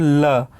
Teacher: ल आप उच्चारण करके देखो, ल जो है वो ऊपर मूर्धा के पास जो है वो टच करती है, और दोनों हवा जो है वो आजू बाजू से बाहर निकल जाती है। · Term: पार्श्विक वर्ण